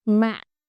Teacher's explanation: And the last one, nặng, is glottal.